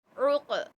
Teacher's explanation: اور عین کو حلق کے درمیانی حصے سے نکالیں گے